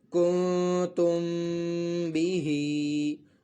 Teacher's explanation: اور یہاں پہ میم ساکن کا قاعدہ اکفا شفوی ہو رہا ہے، وہ ایسے کہ میم ساکن کے بعد جو ہے حرف با آ رہا ہے، تو یہاں پر جو ہے میم ساکن میں اکفا شفوی ہوگا اور غنہ بھی کیا جائے گا۔ غنہ اس صورت میں کریں گے کہ جب ہم با کو ملا کر پڑھ لیں گے۔